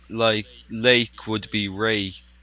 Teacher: in Japan they don't pronounce their L. It sounds like an R sound. · there isn't an R or an L sound, and it's just one sound that they use for both of those, so they can't really pronounce either.